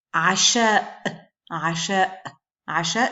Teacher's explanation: je prononce mon coup de glotte à la fin du mot